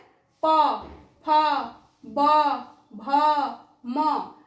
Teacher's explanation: এই দুটো ঠোঁট আমাদের এক জায়গায় হয়ে যাচ্ছে, তাই একে বলা হচ্ছে ওষ্ঠ বর্ণ।